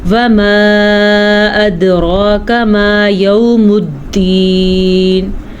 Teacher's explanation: وما میں جو مد ہے اس کو 3 الف کے برابر لمبا کرتے ہیں اور اس مد کو 5 الف کے برابر مد کرتے ہیں لمبا.